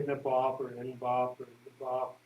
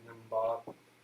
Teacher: In some places, when there's a B word, sometimes they'll put an M sound to connect to the B sound a little more smoothly. So you could say Nibop or Inbop or Nibop, but some also put an M sound as a more smooth connector to like Nimbop.